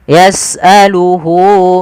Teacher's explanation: seperti ini H yang menunjukkan kepada orang ketiga yaitu dia yasaluhu panjangnya berapa harakat untuk Mad Silah qasirah yaitu dua harakat maka Hunya di sini panjangkan jangan yasaluhuma tapi panjangkan dulu di